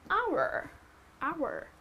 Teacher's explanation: it is pronounced as hour, right? The H is silent here, so that becomes your vowel sound.